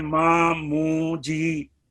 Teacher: माँ अलिफ की मिकदार, मू वाव की मिकदार, जी या की मिकदार